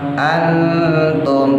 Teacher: nun mati ketemu ta, ikhfanya akrab, condong ke en